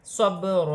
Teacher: با ساکن ہے، حروف قلقلہ میں سے ہے، قلقلے کے ساتھ ادا کیا جائے گا